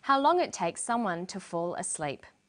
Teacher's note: And then for the very last item in the list, how long it takes someone to fall asleep. She uses falling intonation. This is how we know the list is finished.